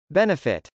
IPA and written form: bˈɛnəfɪt (benefit)